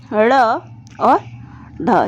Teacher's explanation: तो देखिए पहले उत्क्षिप्त व्यंजन के बारे में, जो जीभ के ऊपर पहले मूर्धा को स्पर्श करती है और फिर झटके से नीचे आ जाती है, वो होता है हमारा ड़ और ढ।